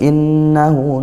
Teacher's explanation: innahu, nun bertasydid dibaca gunnah dengung